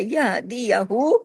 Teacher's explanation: یہ ہا سینے کی طرف جاتا ہے، يَهْدِيَهُ، ہا الٹا پیش ہو جو ہے اس کا پورا حق ادا ہوگا۔